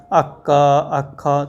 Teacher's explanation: जिह्वा मूल्य से, तो जिह्वा मूल समझते हैं, जिस प्रकार देखें ना, प से पहले अर्ध विसर्ग सदृश, उसी प्रकार से क और ख से पहले अर्ध विसर्ग सदृश जो चिन्ह रहता है उसका उच्चारण करते हैं जिह्वा मूल्य से